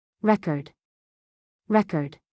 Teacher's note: the noun record has stress on the first syllable. The verb record has stress on the second syllable.